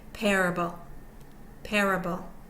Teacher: one of course means primary stress it's over the first syllable the first syllable is primary stressed the second syllable is unstressed and so is the third